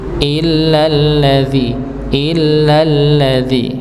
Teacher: jadi langsung tapi dengan hentakan dikarenakan dia bertasydid